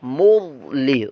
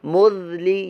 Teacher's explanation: آپ کو ضا کو پر کرنا ہوگا. ذال کی آواز اور زا دونوں کی آواز میں سے بچانا.